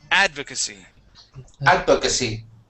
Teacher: So that the stress is at the very beginning.